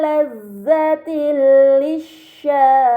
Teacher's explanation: Ini dinamakan idgham bila gunnah. Maka kasrah tain harus dibaca secara melebur tanpa gunnah yang dipanjangkan